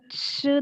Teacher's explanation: there is friction in the mouth between the tongue and the upper part of the mouth